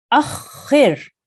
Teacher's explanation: you have to harden because of the shadda on top of the kha